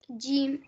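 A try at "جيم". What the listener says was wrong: जीम, लेकिन हम इसको भी थोड़ा सा जब लंबा पढ़ेंगे, ठीक है?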